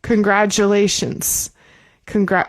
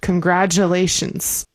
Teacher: the T in congratulations, we say like a J sound.